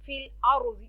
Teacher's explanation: रॉ को मोटा पढ़ेंगे, रॉ से पहले ज़बर है, ज़ॉद मोटा हरूफ है, हरूफ मुस्तअलिया है.